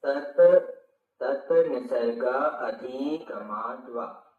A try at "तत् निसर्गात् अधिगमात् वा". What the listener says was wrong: हाँ, निसर्गा के बाद त लेना, निसर्गात,